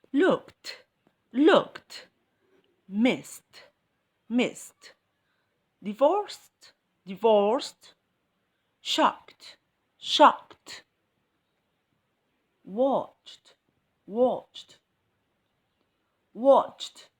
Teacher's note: Okay, let's see now words ending with ed, but I hear the T sound at the end.